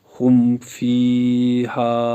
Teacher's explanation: میم کو ظاہر کر کے پڑھیں گے، جس کو اظہار شفوی کہتے ہیں، جیسے ہم فیہا۔